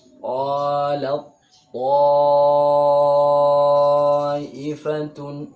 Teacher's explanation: Tak sukun bertemu ta, maka hilang. Bunyi tak sukun ini hilang, langsung diganti pada ta. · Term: idgham